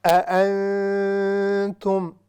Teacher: 2 حمزے ہیں اور ہم نے ان کو جرکنگ ساؤنڈ یعنی جھٹکا نہیں دینا، ہم بالکل سموتھ کے ساتھ.